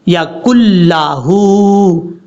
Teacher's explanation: نون کو چھوڑ دیں گے، کاف کو لام سے ملائیں گے، یکن لہو، ہا کے اوپر الٹا پیش ہے، لمبا کریں گے ہا کو، یکن لہو۔